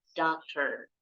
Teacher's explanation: huruf O-nya bunyinya A. Yang terakhir OR-nya bunyinya R.